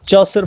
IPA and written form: ˈtʃɔːsər (Chaucer)